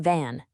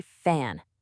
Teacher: That VV sound is voiced. It's got that vibration. While the FF sound is voiceless. It's just air.